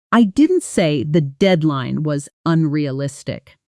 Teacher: If I stress the word say, it implies I communicated it differently, maybe through writing instead of speaking. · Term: sentence stress